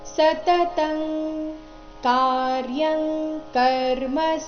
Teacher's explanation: ಅನುಸ್ವಾರ ಇಲ್ಲಿ ಕವರ್ಗದ ಅನುನಾಸಿಕ ಂಗ ರೀತಿ ಉಚ್ಚಾರಣೆ ಆಗ್ತಾ ಇದೆ